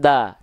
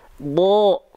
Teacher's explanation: fathah kan kita baca SH keluarnya vokal o lalu huruf Dod huruf Dod kan ketika kita lafalkan bukan Da tapi do ya vokal o